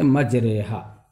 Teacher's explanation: را کو زیر کی طرف اور الف کو یا کی طرف مائل کر کے پڑھا جاتا ہے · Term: رائے ممالہ